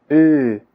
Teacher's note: Esta vocal es parecida a la I, pero con la lengua retraída.